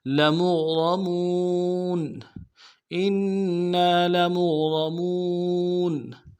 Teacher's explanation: میم کو غین کے ساتھ ملانا ہے، غین کو موٹا ادا کریں گے، را کو موٹا ادا کریں گے